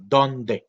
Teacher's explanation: La palabra donde tiene esa D oclusiva, es decir, que explota claramente